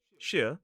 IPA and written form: ʃɪə (shire)